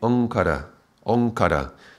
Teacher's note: Om followed by another sound becomes this Ong. This nasalization of the sound that becomes like a G. So this would be Omkara, Omkara.